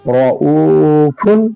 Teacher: را پر زبر ہے اس لیے را کو پر پڑھیں گے۔